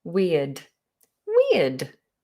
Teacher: Just think about a long E sound. We, like we, you and I. We, and then a schwa, d.